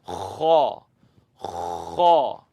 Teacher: And when something has a scratch, you tend to kind of scratch it a little bit. So scratch the back of your throat and say kha, kha, scratch.